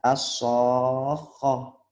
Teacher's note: Itu kalau tak marbuto dibaca H, kalau diwakofkan, diberhentikan. Bukan T. Yang benar dibaca H.